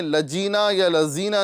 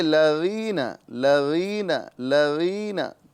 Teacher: ساتھ ہی ساتھ یا مدہ ہو رہی ہے، ایک الف کے برابر کھینچ کے پڑھیں گے اور ذال کو نرمی کے ساتھ ادا کریں گے. یہاں پر زا یا جا ادا نہیں کریں گے، لجینا یا لزینا نہیں کہنا ہے بلکہ لغینا لغینا لغینا.